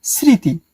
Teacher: কখনো কখনো ম অনুচ্চারিত থাকতেও পারে।